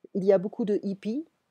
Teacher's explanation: I'm not pronouncing the H in French.